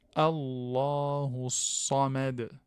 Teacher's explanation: Donc, lame solaire, on a dit parce que le sad, c'est une lettre solaire, et donc le lem ne se prononce pas, il est assimilé à la lettre sad. · Le sad, il est emphatique et sifflante. Donc, la lettre, elle est sifflante.